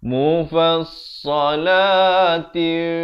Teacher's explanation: ikhfa hakiki, disamarkan 2 harakat. Ada bunyi anginnya.